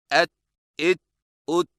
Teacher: ता और ता की आवाज़ में फ़र्क। ता बारीक और बगैर झटके वाली आवाज़। अदायगी के वक्त जुबान की नोक को सामने वाले ऊपर के 2 दांतों की जड़ से लगाएं।